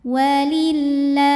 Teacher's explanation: cara baca lamnya adalah tipis bunyinya la tanpa harus mengangkat pangkal lidah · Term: tarqik